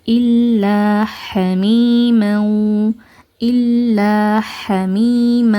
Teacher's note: இந்த சத்தா பெற்ற லம நல்லா கிளியரா ஓதுங்க குன்னா செஞ்சு ஓதக்கூடாது. அண்ட் இங்க இருக்கறது வந்து அலிஃப் மத்தா அதனால இரண்டு ஹரக்கத்தை நீட்டி ஓதுங்க.